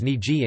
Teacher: the stop /q/ has become the fricative /ɣ/ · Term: consonant weakening